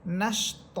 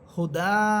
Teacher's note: দুই সবরকে এক সবর বানিয়ে এক আলিফ টেনে পড়বেন। অর্থাৎ তখন পড়বেন নিসা আ বলে এক আলিফ টেনে পড়বেন। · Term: এক আলিফ মদের তৃতীয় প্রকার